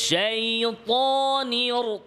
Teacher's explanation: ত বেশি লম্বা হবে না, এক আলিফ, দুই হারাকাত, দুইবার ত ত, দুইবার ত তা বললে যতটুকু সময় লাগে এতটুকু লম্বা হবে এক আলিফ।